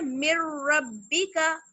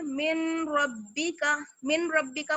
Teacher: मीम को direct हम रा मुशद्दद से मिलाएंगे और नून की जो साउंड है वो खत्म हो जाएगी